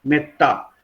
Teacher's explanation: आपण त्या ए वरती कुठल्याही प्रकारचा जोर देत नाही किंवा त्याला ताणत नाही किंवा लांबवत नाही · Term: ऱ्हस्व